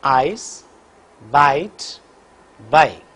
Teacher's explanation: during the articulation of this vowel the lips are unrounded for the both elements · the glide movement begins from front open position and moves in the direction of RPE.